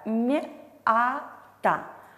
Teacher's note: Если они стоят после согласного, они обозначают 1 звук и смягчают предыдущий согласный. Например, в слове «мята» буква «я» обозначает звук «а», при этом смягчает предыдущий согласный «м»